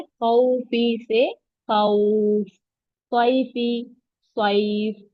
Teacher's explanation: पेश वाला हुरूफ हो तो, और वक्फ करना हो तो, मद करते हुए आखिरी हुरूफ का जबर जेर पेश उड़ाकर साकिन कर देते हैं। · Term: मदलीन